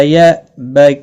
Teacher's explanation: حمزہ ساکن کو جھٹکے کے ساتھ پڑھا جائے گا